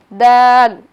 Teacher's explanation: দালের উচ্চারণের স্থান যেটা সেটা হলো জিহ্বার আগা সামনের উপরের দুই দাঁতের গোড়ার সঙ্গে লাগিয়ে